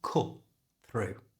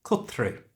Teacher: by learning how to say it in a natural way because the first word cut ends in a t sound a consonant sound and the through starts with a T sound we don't need to pronounce the first one